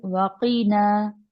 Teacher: वकीना में काफ को मोटा रखिए